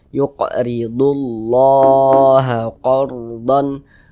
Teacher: Mad thi'i panjangnya dua harakatah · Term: mad tabi'i